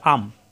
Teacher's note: আন ইন উন ন এর মত উচ্চারণ আসে কিন্তু ধরতে হবে ম এর মতো অর্থাৎ মিম ধরে পড়তে হবে